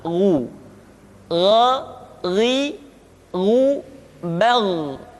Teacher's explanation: Ketika dhammah, baru bibir kita dimonyongkan sehingga keluar vokal u dengan sempurna.